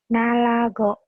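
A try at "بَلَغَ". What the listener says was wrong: Enak aja nalago. Lupa titik, inget ya. Ini titik satu di bawah.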